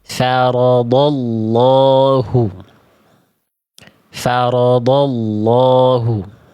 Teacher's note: sama kayak huruf d tebal lamnya diangkat pangkal lidahnya. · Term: dibaca tebal